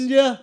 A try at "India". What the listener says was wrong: It's close. We say it with the D though.